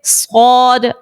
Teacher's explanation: جب ہم صاد کو پڑھتے ہیں تو زبان ہماری جو ہے وہ پیچھے سے تھوڑی سی اٹھ جاتی ہے تاکہ یہ بھاری لگے. صاد جو ہے وہ بھاری لگے، زبان پیچھے سے تھوڑی اٹھ جاتی ہے. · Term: پر حرف